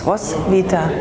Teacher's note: the W is a V sound, and the TH is silent. It's just a T sound.